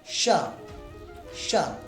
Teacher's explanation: जिसमें हमारी जिह्वा ऊपर तालु में जाके स्पर्श करे, उसे कहते हैं तालव्य शकार